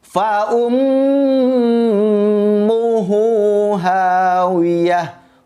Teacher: Fa umnya ditahan karena ada mim bertasydid.